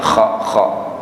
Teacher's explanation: Jadi ada kayak dahak disertai nafas keluar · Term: huruf kha